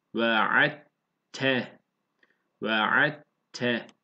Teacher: Muhammed'e nil vesile vel fadile veb'ashu veb'ashu peltek ayın veb'ashu meqamen mahmuden illezi ve'atte ve'atte. Burada dal harfi var ve T harfi gelmiş. Burada idgam yapılıyor. Bunu ikisinde T okuyoruz.